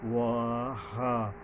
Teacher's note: ওয়া হা, এই যে হায়ের উপরে একটা খাড়া জবর আছে, একালিপ টানতে হবে। ওয়া হা, ওয়ার উচ্চারণ 2 ঠোঁটের মাঝখান থেকে হালকাভাবে